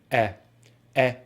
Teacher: the lips are more spread, the jaw is more open, and the sound comes from further from the front of the mouth, like so: /e/ /e/ as in sex. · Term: short vowel sound /e/